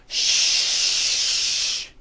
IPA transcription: ʃ